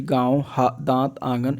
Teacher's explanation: अनुनासिक स्वरों के उच्चारण में वायु धन मुख के साथ साथ जो है नाक से भी निकलती है जैसे कि गाँव, दांत, आंगन इत्यादि।